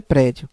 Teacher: está escrito como som de prédio correto é prédio ou seja ela é uma paroxítona porque o som mais forte é a penúltima sílaba